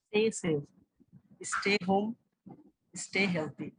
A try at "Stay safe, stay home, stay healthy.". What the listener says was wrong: একটু ক্যাচ করতে হবে, stay. টি এর উচ্চারণ কিন্তু ভোলা যাবে না। ওকে, এটা কিন্তু নতুন রুল, টি এর উচ্চারণ কিন্তু ভোলা যাবে না। আমরা ঠিক কিভাবে শুনেছিলাম, টি, রাইট? টি,